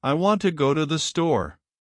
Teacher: Notice how to to and there are almost rushed through quickly and quietly while want, go, and store are clear and emphasized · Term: Sentence stress